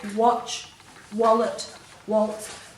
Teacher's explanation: When you say those words, you can't feel any air coming out of your mouth after those W's